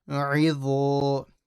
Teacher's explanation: So dha is a heavy letter with an alif.